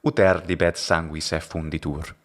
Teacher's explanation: Ecclesiastical and classical pronunciations would be basically identical here, except for the retracted S.